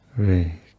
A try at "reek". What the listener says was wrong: A little tense at the end. Reek.